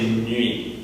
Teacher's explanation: So we already have an E sound that's turned into a glide and an U sound that's turned into a glide. Now we take the U sound and turn that into a glide. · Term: Y glide